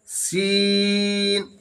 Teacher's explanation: छोटी सीन है जिसको सीटी की तरह आवाज निकालेंगे। इसमें नुक्ता नहीं होता है और बड़ी शीन में तीन नुक्ता होता है।